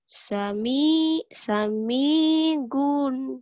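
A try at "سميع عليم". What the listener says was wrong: Sami on kan ada titiknya. Sami on alimun.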